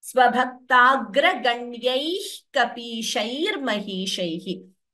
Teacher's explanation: However, when we chant the full pada together, we chant it as svabhaktagra ganyaih kapishair mahishaihi. So, svabhaktagra ganyaih, we don't chant the ha completely.